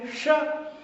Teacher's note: जो हम तालव्य है तो तालु से हमारी जीभ टकराएगी, श तो सीटी बोलते हैं। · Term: तालव्य सा